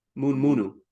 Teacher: What happens in Roviana with reduplication is things are written as CVCV reduplication, but it's actually CVC reduplication, meaning the word good morning is written as munu munu, the word morning, munu munu, M-U-N-U, M-U-N-U.